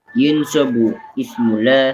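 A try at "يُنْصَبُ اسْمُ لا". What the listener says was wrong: Yunsabu semula langsung sambung bacanya.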